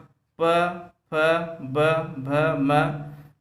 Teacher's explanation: दोस्तों ये ओष्ठ है। जब दोस्तों आपस में दोनों ओठ चढ़ते हैं तभी हमारे मुख से प फ ब भ निकलता है।